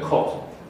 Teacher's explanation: So it's lower than put, but it's not as low as cat. And it's got the lip rounding that is lacking from this sound that we had in New York City.